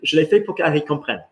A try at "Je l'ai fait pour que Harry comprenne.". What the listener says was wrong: There you go.